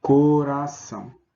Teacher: Na divisão silábica, percebemos que coração. Percebemos que esse ão tem o timbre fechado. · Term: ditongo nasal